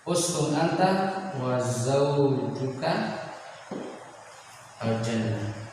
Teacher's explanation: namun harus diikhfakan, disamarkan nun sukunnya.